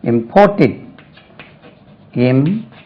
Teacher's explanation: Stress lies on the second syllable.